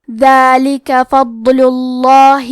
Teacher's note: کلمت الفضل میں حرف الضاد کو ظاہر کریں گے اور اسے موٹی آواز میں پڑھیں گے